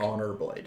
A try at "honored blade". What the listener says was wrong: No, it's not an honor. It's an honored, blade.